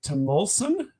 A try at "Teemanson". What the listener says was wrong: it's not a short. It's a long e rather than a short one.